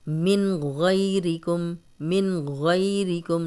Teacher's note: نون ساکن آگے غین آ گیا تو ہم غنہ نہیں کریں گے